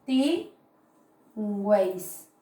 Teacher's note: Puedo ver vocal cerrada, más vocal abierta, más vocal cerrada, ¿verdad? Entonces veo que hay tres vocales juntas, se está produciendo el trictongo.